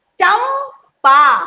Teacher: इसमें जो बिंदी है वो आधे माँ की साउंड निकालेगी। · होठ से, ये होठ ओष्ठ वर्ड है, होठ से बोलने वाला पा वर्ड है, तो पा बोलने से पहले आपको बोलते समय होठ को बंद करना होगा।